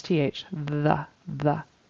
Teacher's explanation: I heard a d for the th